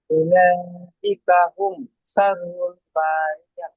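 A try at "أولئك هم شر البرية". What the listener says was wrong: রুল টান হয়ে গেল, শাররুল বারিয়া।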